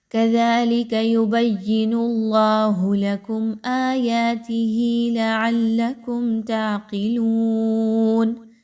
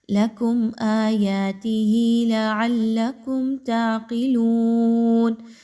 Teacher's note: میم کی ادائیگی بڑی کوئکلی رکھنی ہے، جلدی سے رکھنی ہے، کلیئر رکھنی ہے، غنہ کسی طرح کا نہیں ہونا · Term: اظہار شفوی